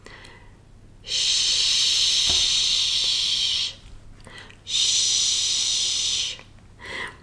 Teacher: The blade of the tongue just sits below the alveolar ridge and the centre of the tongue is raised towards the hard palate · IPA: /ʃ/